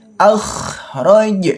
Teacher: kha sukun ini termasuk hukum bacaan rakhawah yang dialirkan membacanya. Jangan sampai kita membacanya akh akh itu hati-hati salah.